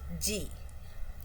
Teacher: So, it is voiced. Again, G also is a velar plosive because air comes from soft palate and it comes out through the mouth. · When we say G our vocal cords are vibrating. It's it's held together and it's vibrating.